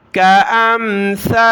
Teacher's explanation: سا پر ہم نے زبان نکالنی ہے، سا پر ہم نے سیٹی کی آواز کے ساتھ نہیں پڑھنا۔